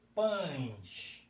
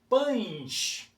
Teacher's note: Você não pronuncia pães, o E. O E sai com som de I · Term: semivogal